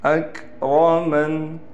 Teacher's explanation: را کو موٹا کر کے پڑھیں گے اور حمزہ کے ساتھ کاف کو بھی صاف طور پر نکالنا ہے